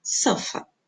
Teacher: No segundo ali está o meu schwa.